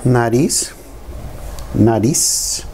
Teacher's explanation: The sound of a Z. But the letter Z has the sound of an S.